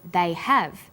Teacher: forms when they are unstressed the H sound is dropped but when stressed the H sound is pronounced